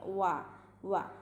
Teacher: മേലെ മുൻപല്ല് നമ്മുടെ താഴെ ചുണ്ടിൽ തട്ടിക്കാതെ അങ്ങനെ ഒന്ന് സർക്കിൾ ചെയ്യുക, ചുണ്ടിനൊന്ന് സർക്കിൾ ചെയ്തിട്ട് ഉച്ചരിക്കുക.